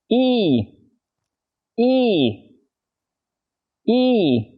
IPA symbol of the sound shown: i: